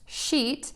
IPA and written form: ʃit (sheet)